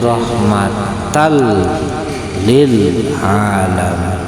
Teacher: Suara nun matinya, suara tanwinnya diidghamkan, digabungkan, disatukan dengan huruf setelahnya maka tidak terlihat.